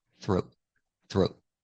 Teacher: In normal conversation, you'll hear this T as a stop T.